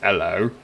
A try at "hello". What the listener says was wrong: Drop the H. It's not that hard.